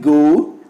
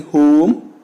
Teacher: The lips are neutral in the beginning but are rounded towards the end.